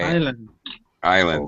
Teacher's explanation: Do not pronounce the S in island.